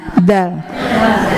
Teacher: Ada di ujung lidah dirapatkan dengan belakang gigi seri atas